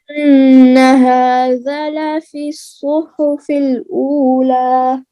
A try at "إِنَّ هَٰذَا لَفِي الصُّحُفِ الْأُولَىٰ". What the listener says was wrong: हाँ दोनों का दा को भी इतना लंबा करें ना, हा के ऊपर खड़ा जबर है और जाल के आगे अलिफ है। إن هذا لفي الصحف الأولى إن هذا لفي الصحف الأولى